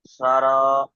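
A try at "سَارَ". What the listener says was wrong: সা টান দিন, হচ্ছে না, র। যে অক্ষর টান হবে, যে আলিফ মাদ্দাটি টান হচ্ছে, তাহলে ওটি বানান করার সময় টান হবে এবং রিটিন পড়ার সময়ও টান হবে। মিন তো রিটিনের সময় অবশ্যই টান দিয়ে পড়তে হবে, র।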